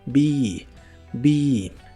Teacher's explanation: se pronuncia con la i larga